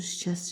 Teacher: Yalnız çar samitlər var. Şikəst sözündə t düşür, şikəst kimi tələffüz olunur.